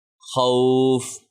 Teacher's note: normal اگر ہم پڑھتے رواں میں پڑھتے تو خوفن کھینچتے نہیں، لیکن چونکہ ہم یہاں پہ وقف کر رہے ہیں تو ہم کھینچ سکتے ہیں اس کو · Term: واو لین